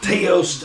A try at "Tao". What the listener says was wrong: Tao. You call it Teo, it's actually pronounced Tao.